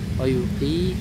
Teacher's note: wuqi kasrahnya panjang karena setelahnya ada ya sukun wuqi dua harakat ya wuqimu panjang juga dua harakat Nah, nas huruf shadnya ditahan tekan dua harakat ya karena bertasydid.